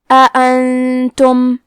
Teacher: ہم نون ساکن کو چھپاتے ہوئے اور غنہ کے ساتھ یہ حکم کو ادا کریں گے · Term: اخفاء